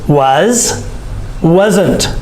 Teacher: here was and wasn't, the S makes the Z sound. So it's not wasn't, it's wasn't, the Z sound.